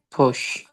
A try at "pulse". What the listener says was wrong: Pulse. I want to hear L, S at the end. Pulse.